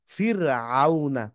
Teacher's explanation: র সাকিন তার পূর্বে হরফে যদি জের থাকে রকে চিকুন করে পড়তে হবে